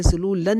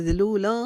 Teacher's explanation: ذلولا, لام کے اوپر 2 زبر کی تنوین اور اس کے بعد فار ہے, یہاں پر اخفا کریں گے, یعنی کہ نون کو ظاہر نہیں کریں گے, ذلولن نہیں پڑھیں گے, ذلولا اخفا کریں گے ایک الف کے جتنا.